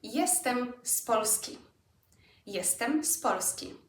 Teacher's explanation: It's an S sound because of the P that Polski starts with.